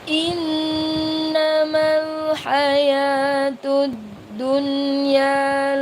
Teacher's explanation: Ada nun bertasydid. Nun bertasydid maka dibaca dengung. Ya, namanya ghunna.